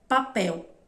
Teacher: Quando ele está no final da palavra, a gente vai subir a língua lá no céu da boca.